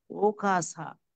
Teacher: সা মানে ওই হাওয়াটা দাঁতের মধ্যে লাগবে। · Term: দন্ত্য স